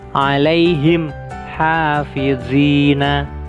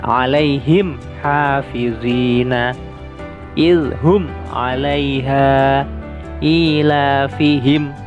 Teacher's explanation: Izhar artinya jelas dan syafawi artinya bibir. Jadi cara membacanya terang di bibir dengan mulut tertutup. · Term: izhar syafawi